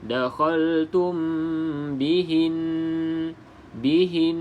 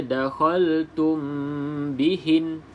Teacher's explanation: walaupun kita nak berhenti, kena juga baca dengan dengung